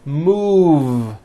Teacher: Move has that voiced V sound.